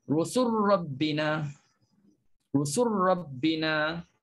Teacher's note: Rabbina jumpa ra. Jadi masukkan lam dalam ra, jangan sebut lagi lam. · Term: idgham